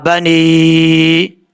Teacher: یہاں پر یا کے اوپر مد ہے، اس مد کو مد منفصل کہا جاتا ہے. اس کو 2.5 الف کے برابر لمبا کریں گے، 3 الف کے برابر بھی آپ لمبا کر سکتے ہیں.